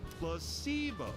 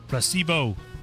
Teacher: The stress is on the middle syllable.